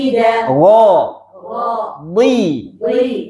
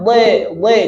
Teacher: di itu kasrah bunyinya seperti i ya di tapi tebal